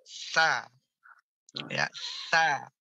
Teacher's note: Jadi ujung lidah kita bertemu dengan ujung gigi seri atas, ditempelkan dulu. Dikit saja, jangan sampai melet, ya, jangan sampai terlalu panjang, tapi sedikit saja. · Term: huruf sa